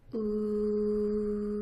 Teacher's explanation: This vowel is made by making a very tight circle with your lips. Ooh. And your voice box is turned on.